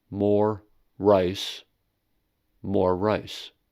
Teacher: the ra of the phrase more rice is said for a longer duration than that of more ice. · consonant sound is extended, which is to say, pronounced for a slightly longer amount of time than a normal single sound. That is, two continuous consonants are not pronounced twice, but pronounced once, but longer than usual. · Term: consonant lengthening